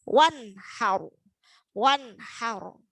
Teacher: ada nun sukun ketemu dengan ha, maka bacanya izhar, dibaca jelas.